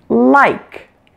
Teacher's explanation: a bit different from our regular or light L in English the L that you're used to hearing at the beginning of words is pronounced with just the tip of your tongue touching behind your upper front teeth